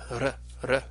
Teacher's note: originally in classical Greek, this would have been pronounced as a rolled r, that r, r sound that you get in Spanish.